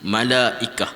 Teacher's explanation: Ta marbutah tu baris dua di atas dia akan jadi ha.